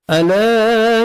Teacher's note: ألا الف مدہ 1 سیکنڈ ہم نے لام کو کھینچنا ہے